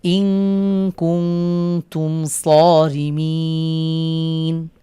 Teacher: মিম সাকিনের পরে সদ হয়েছে, এখানে আমরা ইজহারে শাফাবির নিয়মে গুন্না ছাড়া স্পষ্ট করে পড়ব